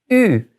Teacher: Now if you look at my lips when I say E, my lips are tight and back. And all I have to do is move my lips forward kind of round, and it becomes U. So try E, then just move your lips forward, U.